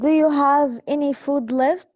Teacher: this is a yes or no question. So this is why we say it's a rising intonation.